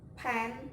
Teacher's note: Two lips are put together, and the air is blocked totally and suddenly released, and then do not vibration.